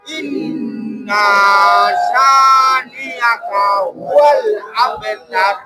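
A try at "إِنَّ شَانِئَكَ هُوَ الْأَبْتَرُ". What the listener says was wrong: ইন্না নাটা টান দেওয়া যাবে না, হ্যাঁ, ইন্না শা, ইন্না শানিআকা, ইন্না শানিআকা হুয়াল আবতার,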